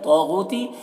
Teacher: تو کو پر پڑھنا حروف مستعلیہ میں سے ہے، اور یہاں پر الف مدہ۔